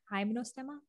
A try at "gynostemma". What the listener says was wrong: Gynostemma. Gynostemma. Like gyno, no guy, gyno.